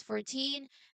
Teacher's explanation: we must put the stress on the last part